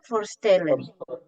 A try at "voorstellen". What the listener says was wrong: V-nya harus dibaca penuh, jangan setengah. Bukan even, karena even tekanan di V.